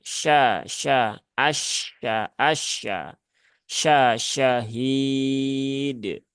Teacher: terlalu berlebihan yang pertama yang kedua juga tidak sesuai Kenapa karena bibirnya menjadi monyong padahal huruf fathah dia tidak boleh monyong ya Nah maka normalkan saja sya sya Asya Asya Sya Syahid